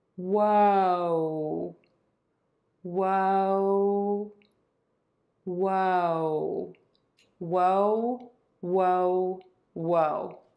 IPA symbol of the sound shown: woʊ